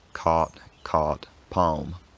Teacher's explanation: for most general American speakers nowadays, all 3 of these vowels are the same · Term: cot-court merger